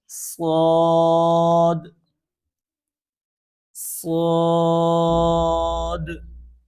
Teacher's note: صاد میں بھی سی ٹی کی آواز نکالنی ہے، اور یہ صاد موٹا حرف بھی ہے